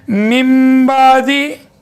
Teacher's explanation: اگر نون ساکن کی آواز کے بعد با آ جائے، با، صرف با آ جائے، تو یہ نون ساکن کی آواز چھوٹی میم میں بدلتی ہے۔